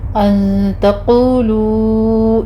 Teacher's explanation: अन में वही हकीकी है, यहाँ पे टू काउंट करेंगे। क़ाफ को पुर पढ़ना है, आगे वाव मद्दा है